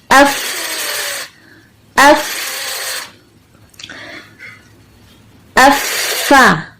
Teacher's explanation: اف اف افا، یعنی سب سے پہلے ہم نے تصادم کیا اف. اب ہمارے ہونٹ، نیچے والا ہونٹ اور اوپر کے دانت مل گئے، صرف دو دانت ملانے، اوپر کے صرف دو دانت، دونوں ملے ہوئے. اب زبر کے لیے ہم نے اس کو جدا کیا، فا فا.